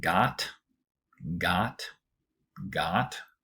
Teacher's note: an example where I have the ah vowel, not the aw vowel